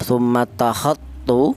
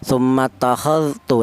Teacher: langsung dalnya ini langsung menyatu huruf ta